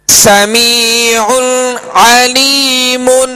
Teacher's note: یہاں دو عین ہے، یہاں پر دو عین ہے اور عین وسط حلق سے ادا کریں گے، اور یہاں غنہ بھی نہیں کریں گے.